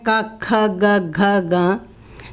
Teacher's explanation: कवर्गः जो है हमारे कंठ को टच करता है